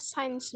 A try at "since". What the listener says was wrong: Since, bacanya since bukan science. Kalau science itu ada lagi kata benda ya, artinya ilmu pengetahuan. Tulisannya seperti ini. Science. Ini bacanya science, tapi kalau ini bacanya since. Since itu tulisannya kayak gini. Cara bacanya ya. Since. Ini cara bacanya.